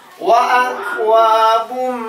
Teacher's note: tanwin menghadapi mim, begitupun mim bertasydid tahan